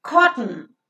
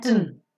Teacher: T is a consonantal sound and n here is considered as a vowel sound.